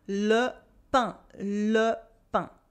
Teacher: Then we saw le pain, remember, with the nasal un sound for bread.